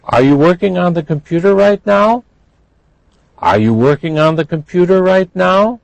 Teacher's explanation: you should have heard that that was rising